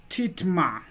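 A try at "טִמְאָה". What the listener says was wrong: vitom-a. This is another case where the kamats is at the beginning of a closed syllable, and it has more of an O sound than an A. Vitom-a.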